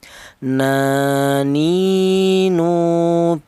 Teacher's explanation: berasal dari ujung lidah menyentuh langit-langit mulut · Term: huruf nun